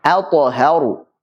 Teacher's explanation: ada huruf hamzah a yang ketemu dengan ta, kemudian juga ada huruf ha yang dibaca dengan tipis, ketemu dengan ra yang tebal. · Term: Tipis, tebal, tipis, tebal.